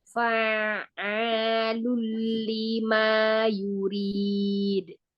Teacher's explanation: fa sudah tipis, nggak masuk hidung, langsung tekan tengah tenggorokan, alir ainnya jangan dilepas, langsung baca fathahnya. Baru dilepas tuh tekanannya. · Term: huruf ain